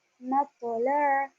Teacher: पो की आवाज झटके वाली होगी और मोटी होगी, मपोला। इस तरह से।